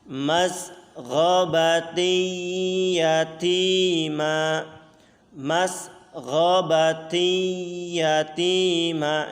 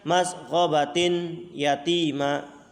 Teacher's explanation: dibaca dengan dengung sepanjang 2 harokat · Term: idgham bi gunnah